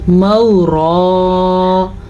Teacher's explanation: اس را کو پر پڑھنا ہے کیونکہ را کے اوپر ایک زبر بن رہی ہے وقف کی وجہ سے